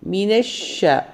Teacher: ഷീന് ശദ് ഉള്ളതുകൊണ്ട് ഡബിൾ ആക്കി ഉയർത്തി പറയുക ഡബിൾ ആക്കി പറയുക ഇരട്ടിപ്പിച്ച് പറയുക അതുകൂടാണ്ട് ഷീനെ നമ്മൾ വായിക്കുള്ളിൽ സൗണ്ട് സ്പ്രെഡ്